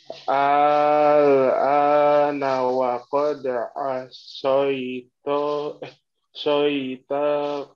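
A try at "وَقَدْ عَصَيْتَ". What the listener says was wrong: Taknya menyeret ya. Asoita, taknya agak panjang. Terusnya pendek ya. Wa qad.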